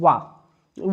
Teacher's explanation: जैसे वा जब आप बोलेंगे तो दांत और ओष्ठ दोनों के सहारे से बोला जाता है। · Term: दंतोष्ठ